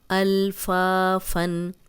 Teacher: اب تنوین ہے، آگے حمزہ آ گیا تو ہم غنہ نہیں کریں گے، الفا فن، فا الف مدہ ہے، آگے تنوین آ گئی۔